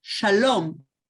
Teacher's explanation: And the long ah from Arabic became o in Hebrew.